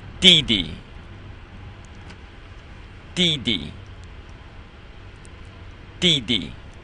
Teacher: It's the 4th tone, and then the second one is neutral.